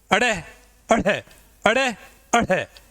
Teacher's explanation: उत्क्षिप्त का मतलब होता है उछलना। जब हम अड़े और अढ़े का उच्चारण करते हैं तो प्रश्वास जो है वो उछलती हुई बाहर आती है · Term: उत्क्षिप्त व्यंजन